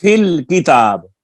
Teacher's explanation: فی کی یا کو یہاں پر حذف کر دیا